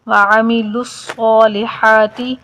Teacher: لام کو صاد کے ساتھ ملا کر پڑھیں گے، صاد کو ذرا سختی کے ساتھ